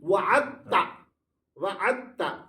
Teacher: دال چھُنہ دال تہٕ تا کو مخرج چھُ اکُے سیم دال دال تا دال یہ ایک ہی جگہ نکلتے ہیں اسی وجہ سے اس مناسبت کی وجہ سے دال کو ہم نہیں پڑھتے ہیں